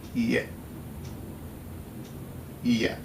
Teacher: Or add at the beginning an alveolar click with unreleased velar co-articulation. Creaky voiced, long alveolar glide with mid-front unrounded vowel and glottal stop.